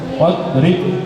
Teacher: Dot bukan termasuk huruf qola. Jadi enggak boleh dipantulkan, harus wadrib.